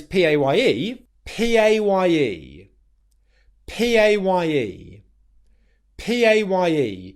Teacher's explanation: And the mistake that you need to be aware of here is not making the P sound without aspiration. You want to make sure that when you say P, your P sound is aspirated